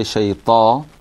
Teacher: So when you say shayta, the ta should actually be pronounced out of your tongue. It should be your tongue and your top teeth that pronounces the ta.